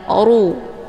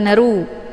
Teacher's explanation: Kafaruin, ru ini dibaca tebal karena ro-nya berharokat zummah. Cara bacanya, posisi pangkal lidah juga terangkat ke langit.